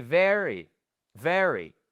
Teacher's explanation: le pauvre petit Y, bam, il est un peu laissé à l'abandon, on l'entend mais pas beaucoup à la fin · la première syllabe, c'est sur le V, le E et le R. C'est là où vous avez votre stress. Et ensuite, le pauvre petit Y, bam, il est un peu laissé à l'abandon.